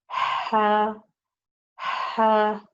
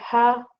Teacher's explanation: you have to give it the running of breath, the whispering sound